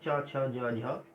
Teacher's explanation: जो च वर्ग है वो स्पर्श भी होता है और उसके उच्चारण में थोड़ा सा संघर्ष भी होता है, इसीलिए इन व्यंजनों को स्पर्श संघर्षी कहते हैं।